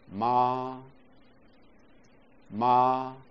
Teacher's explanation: 气流运行的过程会在嘴唇的部位受到一些阻碍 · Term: 唇音